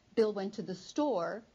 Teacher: notice that the emphasis is on the word store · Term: main stress